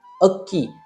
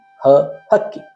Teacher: ಅ ಎಂಬಲ್ಲಿ ಸ್ವತಂತ್ರವಾಗಿ ಉಚ್ಚರಿಸುವಂತಹ ಅ ಎಂಬ ಸ್ವರಾಕ್ಷರ. ಹಕ್ಕಿ ಎಂಬಲ್ಲಿ ಹ ಎಂದು ಮಹಾಪ್ರಾಣವಾಗಿ ಉಚ್ಚರಿಸುವಂತಹ ಅವರ್ಗೀಯ ವ್ಯಂಜನಾಕ್ಷರ. ಹ ಎಂದು ಹೇಳಿದಾಗ ಮಹಾಪ್ರಾಣವು ಉಚ್ಚರಿಸಲ್ಪಡುತ್ತದೆ.